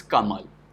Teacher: So if we have a word Kamal, so we will write Ka along with swa, Ma along with swa, and La along with swa, Kamala. But in Hindi pronunciation, it has been observed that the last swa, end swa, are not realized in sound system. So end swa generally gets deleted.